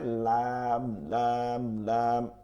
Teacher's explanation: জিহ্বার আগার কিনারা, এই কিনারাটা, এই সাইডটা, এই দাঁতগুলোর মাড়ির সঙ্গে লাগাইয়া। জিহ্বার আগার কিনারা সামনের উপরের দাঁতের মাড়ির সঙ্গে লাগাইয়া লাম লাম লাম